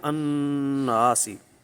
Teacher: تو آپ کے سمجھانے کے لیے یہ میں نے لکھ دیا ہے الناسی بنے گا، کیونکہ لام جو ہے اس کا ادغام ہو گیا، اب لام نہیں پڑھا جائے گا بلکہ اب وہ شمسی حرف مشدد بن چکا، اب وہ پڑھا جائے گا الناسی، ٹھیک ہے۔ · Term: ادغام شمسی